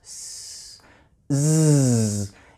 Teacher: Those two sounds are a pair. S is unvoiced. When I add voice, s, z, it becomes that Z sound. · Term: voiced consonant sound